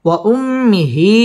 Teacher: ঠোঁট গোল করিয়া পড়তে হবে ওয়া উম্মি এটা হচ্ছে হরকতের বামে মিমের মধ্যে তাসদিদ আসছে এটা হচ্ছে ওয়াজিব গুন্নাহ করে পড়তে হবে